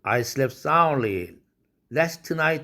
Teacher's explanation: slept 할 때 트 날아가고 soundly 할 때 드 날아가죠